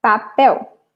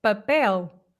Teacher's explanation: nós fazemos mesmo L, não é? L. Vocês transformam em U, certo?